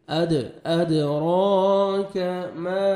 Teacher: الف مدہ ہے، 1 سیکنڈ میم کو کھینچنا ہے